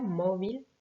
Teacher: Mobile, là vous avez l'accent écrit qui vous indique où est accentué le mot, donc c'était la première syllabe